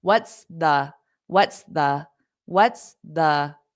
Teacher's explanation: out it's for the S what what's what's what's the so you have to pronounce that s what's but then you cut it short and then go to the T